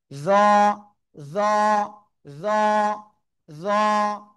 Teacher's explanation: জিহ্বার আগা সামনের উপরে দুই দাঁতের আগায় লাগান, লাগিয়ে মোটা আওয়াজে পড়বো আমরা।